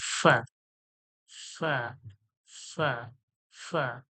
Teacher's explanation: হালকা ঠোঁটের মাঝখান থেকে শুধু হাওয়াটা বার হয়ে যায়, ফা। দুই ঠোঁটের মাঝখান থেকে হাওয়া বের হয়ে যায়, ফা ফা ফা ফা।